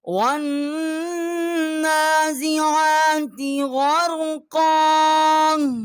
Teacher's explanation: والنازعات غرقا، واؤ کو ہم نے نون کے ساتھ مشدد کیا ہے اور نون کے اوپر کھڑا زبر ہے، ایک الف جتنا آواز یہاں کھینچی ہے، اور غین جو ہے اس کے اوپر بھی، عین جو ہے اس کے اوپر کھڑا زبر ہے، اس کو بھی ایک الف جتنا جو ہے وہ آواز یہاں بلند کی ہے۔